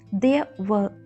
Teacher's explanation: letter R will be silent as it is silent in British English pronunciation